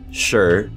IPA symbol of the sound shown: ʃ